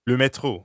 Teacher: the french r is in the middle of metro so it sounds like you're clearing your throat